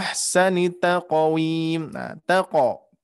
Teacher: huruf qaf dipantulkannya dia mengarah ke harakat fathah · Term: huruf Qalqalah